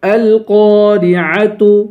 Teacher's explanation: قاف کو پر پڑھیں گے، قاف کے بعد الف ہے، الف حرف مدہ ہے، اسے ایک الف کے برابر کھینچ کر پڑھیں گے ، را کو باریک کریں گے، عین کی آواز نکالیں گے،